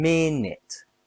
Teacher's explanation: minute has two syllables stress on min.